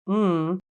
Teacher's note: in the production of mmm the lips are closed and your tongue is in a neutral position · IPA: /m/